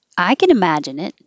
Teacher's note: I'm putting the emphasis on I, like maybe you can't, but I can.